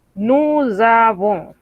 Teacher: Y esa Z es una Z que vibra, una Z que es sonora. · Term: liaison